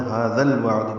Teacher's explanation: ہاذا میں ہا کو 2 حرکات لمبا کرنا ہے، ذال کو الوعد کے لام سے ملانا ہے، تو ھذا الوعد بیچ میں الف نہیں پڑھیں گے۔ ذال نرمی سے ادا کریں گے، لام ساکن پہ اظہار ہوگا، عین ساکن پہ بھی اظہار ہے۔